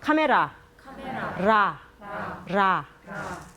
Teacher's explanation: 카메라 할 때 약간 닿을 듯 말 듯 하면서 세게 닿지는 않고 발음이 납니다.